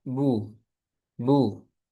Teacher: Seperti huruf ba ketika dhammah kita baca bu, bu, dimunyungkan bibirnya.